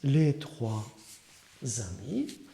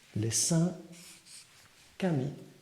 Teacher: the word ami will be transformed and become zami or trami or kami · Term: liaison